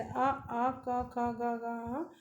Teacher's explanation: जिन वर्णों का उच्चारण स्थान कंठ से होता है